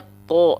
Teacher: karena dia huruf yang tebal makanya keluarnya vokal O